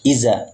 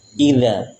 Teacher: Dzal keluar dari ujung lidah tempel di ujung gigi seri. Jangan terbaca dengan iza.